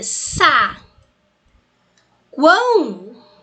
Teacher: eu tenho aqui o A que é uma vogal, o U que é uma semivogal, então isso daqui é pra gente um tritongo